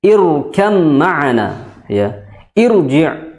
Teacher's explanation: ya bukan Ir tapi irji ya jadi Hamzah wasal setelahnya ro maka ro tersebut jadi tebal meskipun Hamzah wasalnya itu kasrah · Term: ro yang tebal